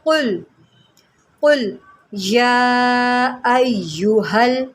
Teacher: قاف جو ہے اس کو ہم موٹا کر کے پڑھتے ہیں، حروف مستعلیہ میں سے ہے، اس کو آپ قل نہیں پڑھیں گے، اس کو آپ پڑھیں گے قل، قل یا ایہا۔